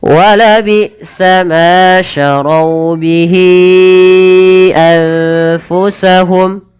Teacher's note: Lagi-lagi ada nun sukun bertemu fa, samarkan ke fa.